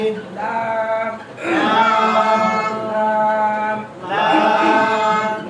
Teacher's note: জিহ্বার আগার কিনারা সামনের উপরে দাঁতের মাড়ির সঙ্গে লাগিয়ে